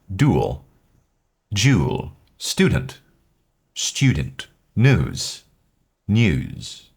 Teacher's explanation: the U sound when it comes after a consonant such as a D or a T can sometimes take on the sound of a Y. And so, it becomes more of a U sound. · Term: liquid U